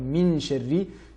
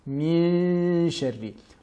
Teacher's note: Par exemple, Min Sharri, donc j'ai le milieu de la langue qui s'élève vers le palais, tout en prononçant donc ce nun dissimulé